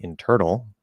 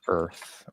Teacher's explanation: the way that you can speak and still sound Perfectly Natural perfectly neutral is to make er into a vowel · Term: ER sound